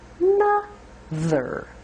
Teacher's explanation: The first sound is just a schwa.